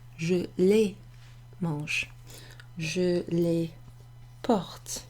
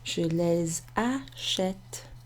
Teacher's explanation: because the verb following pronoun starts with an M, a consonant, I don't pronounce the S